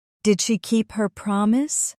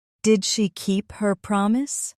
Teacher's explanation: Notice how your voice naturally rose at the end like a question.